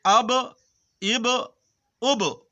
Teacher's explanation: کیونکہ با قلقلہ کے حروف ہے، اس لیے با کے مخرج ٹکر کھا کر الگ ہو جاتے ہیں۔ اب، اب، اب، اب، اب، اب ایسا نہیں پڑھنا ہے، اس طرح پڑھنا نہیں۔